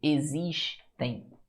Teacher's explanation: Vê se esse M não tem um som de I, assim, meio nasalizado. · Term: semivogal I